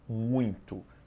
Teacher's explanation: muito apresento hiato errado a palavra muito apresenta ditongo é um ditongo decrescente porque o u você vai pronunciar mais forte